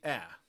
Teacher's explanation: A low front vowel would be a